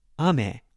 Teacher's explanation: If I want to say candy in Japanese is ame, lower, higher.